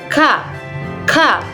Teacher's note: Huruf yang keluar dari pangkal lidah bagian tengah adalah huruf K. yaitu pengucapannya dengan cara pangkal lidah bagian tengah ini [musik] menempel pada langit-langit mulut seperti ka. · pangkal lidah bagian tengah ini menempel pada langit-langit mulut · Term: huruf ka